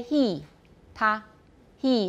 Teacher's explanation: it takes on the place of articulation of whatever vowel comes after it · is it it's basically palatal he he because of the e the e sound is in the palatal area it's high and it's around the hard palate